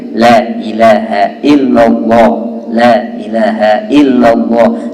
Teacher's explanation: la nya tarkik tipis, ila tarkik juga, ilnya juga tipis, lohnya baru tebal.